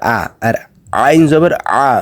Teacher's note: আইনের উচ্চারণ গলার ভেতর থেকে করতে হবে মুখ দিয়ে করা যাবে না